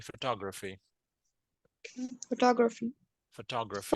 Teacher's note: the stress is on the second syllable here